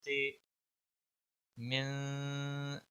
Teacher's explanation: मीम नून ज़ेर मिन, शीन रा ज़बर शर, रा नून ज़ेर रिन, मिन शर्रिन, नून फा ज़बर नफ, मिन शर्रिन नफ, फा खड़ी ज़बर फा, मिन शर्रिन नफ़ा, सा खड़ी ज़बर सा, मिन शर्रिन नफ़ासात, तज़ीती, मिन शर्रिन नफ़ासात, मिन, नून पे इक्फा होगा क्योंकि हरूफ इक्फा का हरफ आगे आया हुआ है, तो नून पर गुन्ना होगा। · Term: इक्फा हकीकी